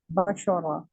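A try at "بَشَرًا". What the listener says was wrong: बाशारा, सिर्फ रा को मोटा करना है, बाशारा।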